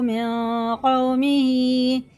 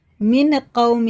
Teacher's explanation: دیکھیں غَيْرُهُ أَفَلَا تَتَّقُونَ فَقَالَ الْمَلَأُ الَّذِينَ كَفَرُوا مِن قَوْمِهِ، یہ دیکھیں یہ تنوین انہوں نے ساکن بعد حرف اخفا میں سے قاف آ رہا ہے تو غنہ اور اخفا دونوں کر کے پڑھیں گے۔ اس نون کو ایک الف کے برابر ناک میں چھپا کے پڑھنا ہے، من قومہ ہی نہیں پڑھیں گے، غلط ہو جائے گا بہت زیادہ۔